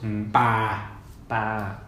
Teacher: Non-aspirated P. My throat's closed.